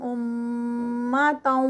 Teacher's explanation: امَّةً پہ غنہ ہے میم مشدد